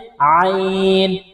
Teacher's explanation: عین کو گلے کے درمیان سے نکالیں گے۔